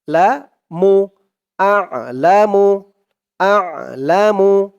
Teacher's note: হামজা আইন জবর আ উচ্চারণটা গলার ভেতরে চলে যাবে